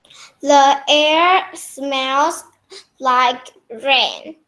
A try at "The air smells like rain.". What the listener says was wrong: Good, very good, very good.